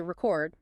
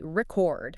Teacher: You say record, stressing the first syllable.